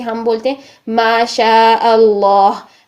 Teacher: इसमें जलाला के लाम को मोटा करेंगे अल्लाह ताला की बुजुर्ग के तौर पर